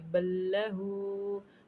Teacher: उल्टा पेश आ रही है, तो इसको भी हमें एक अलिफ के बराबर लंबा करेंगे